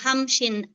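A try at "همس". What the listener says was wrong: Ya, hamsin ya, jangan hamshin. Hamsin.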